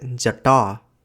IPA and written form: dʑɐ.ʈɑː (जटा)